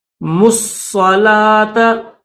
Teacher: ملا کر پڑھیں گے تو میم کے بعد جو واو ہے یہ نہیں پڑھیں گے ، الف نہیں پڑھیں گے، دوسرا الف بھی نہیں پڑھیں گے،